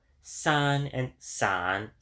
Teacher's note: For example, san and san, though they have different tones, still have the same vowel quality and consonants